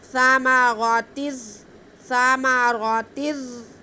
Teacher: ہم تنوین کو را کے ساتھ ملا کے پڑھیں گے، لیکن غنہ نہیں کریں گے، ادغام بلا غنہ ہے. · را کو زا سے ملائیں گے، زا میں سیٹی کی آواز آئے گی اور را باریک پڑھا جائے گا کیونکہ را کے نیچے زیر ہے.